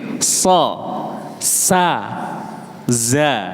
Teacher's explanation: ujung lidahnya itu di bawah ketemu gigi depan yang bawah.